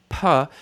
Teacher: P is the lips closing with no vocal cord vibration.